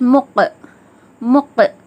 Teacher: ஹுர்ஃபே முஸ்தாலியாக்காக வல்லினமாகவும் ஓதுறோம், கல்கலாக்காக கல்கலா செஞ்சும் ஓதணும். முக் அந்த மாதிரி வல்லினமாக அந்த க சவுண்டு ப்ளஸ் கல்கலாக்காக இரு முறைகள் அசைச்சி அதட்டி ஓதுற மாதிரி இக், முக் அந்த மாதிரி ஓதுறோம்.